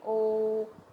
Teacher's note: ओ sound आ रही है गले में से और होठ घूम रहे हैं हमारे गोल हो रहे हैं